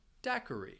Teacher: That second syllable also has the schwa.